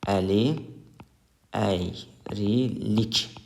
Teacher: burada əli sözündəki i saiti tələffüzdə düşmüşdür